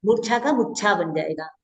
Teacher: मूर्छा में र है ना, र को केवल हटा देंगे और कुछ नहीं करना है, मुच्छा कर देना है। और ऊ देखो इधर, देखो ऊ लॉन्ग ऊ है, इधर शॉर्ट ऊ कर देना है, तो मुच्छा बन जाएगा, ठीक है।